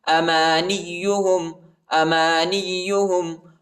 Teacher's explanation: نون کو یا کے ساتھ ملائیں گے ٹھیک ہے، اور یا کو شدت کے ساتھ سختی کے ساتھ پڑھیں گے